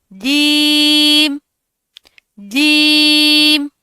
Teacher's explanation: जुबान का दरमियानी हिस्सा ऊपर के तालू से लगेगा तो जीम अदा होगा। इसमें चे की साउंड नहीं आनी चाहिए।